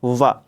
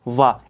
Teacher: एकमात्र ध्वनि, जो एकमात्र आपका वर्ण है वा, ये दंतोष्ठ है।